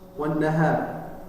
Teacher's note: ada gunnah tasydid, maka ditahan 2 sampai 3 harokat.